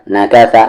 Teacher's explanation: सा का मखरज ज़बान का कॉर्नर, सामने वाले दांत का कॉर्नर